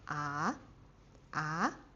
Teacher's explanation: the second tone is like going from your neutral tone neutral pitch to the highest